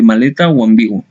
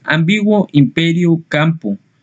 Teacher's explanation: La letra M representa el fonema nasal labial de maleta o ambiguo.